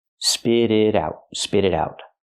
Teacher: the T in spit and the T in it both change to a fast D